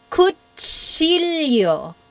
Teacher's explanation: When you think about it, that is what your mouth is doing, right? It's saying a T and then an S right after.